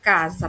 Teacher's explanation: ele tem som de z nesse caso ele não é o fonema s o fonema é o z